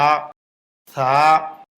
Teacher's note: জিহ্বার আগা উপরের দাঁতের আগায় লাগে।